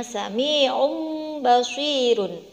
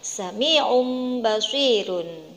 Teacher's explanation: bunyi suara domatain tersebut akan diganti atau ditukar dengan huruf mim sukun. Jadi bunyinya sami'um basirun, bukan sami'un basirun. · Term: iklab